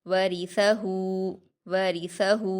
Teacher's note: تلاوتہ تلاوتہ تلاوتہ ورثہ ورثہ، واو پر حرکتیں جلدی پڑھیں گے، را پر زیر کی حرکتیں اس کو جلدی پڑھیں گے اور باریک پڑھیں گے۔ سا کو نرمی سے ادا کریں گے، اس پر حرکتیں جلدی پڑھیں گے، ہا پر الٹا پیش ہے، اس کو واو مدہ کی طرح 2 حرکات کھینچیں گے۔